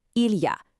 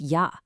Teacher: The il part, poof, gone, just disappears.